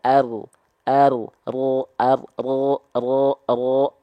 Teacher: Jadi ujung lidahnya nggak betul-betul dikenain, tapi punggung lidah kita. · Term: huruf ro